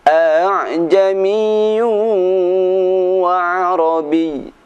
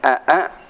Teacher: Keempat, tashil, yaitu membaca hamzah yang kedua pada lafadz a'jamiyu dengan suara yang ringan